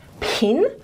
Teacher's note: our letter P is aspirated most of the time, especially in stressed syllables and at the beginnings of words like pin